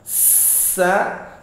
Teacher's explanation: Sa, ini deras sekali napas yang keluar. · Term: huruf hamas